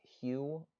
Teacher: voiceless palatal fricative we say it in the words like hue where the letter h is followed by a y sound